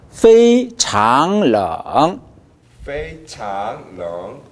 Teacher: 페이 일성 유지해 주시고 공기를 과감하게 쏟으세요. 그러면 일성 유지가 잘 됩니다.